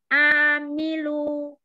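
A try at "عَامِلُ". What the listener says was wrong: Jangan ke hidung ainnya. Amilu. Tenggorokan tengah.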